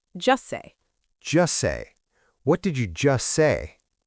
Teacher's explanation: When we say this phrase quickly in connected speech, we almost never pronounce the T at the end of just. Really? Yeah, it gets swallowed because it's right next to the S sound in say.